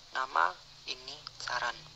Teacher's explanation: Konsonan N, bunyi apikoalveolar kriteria nasal bersuara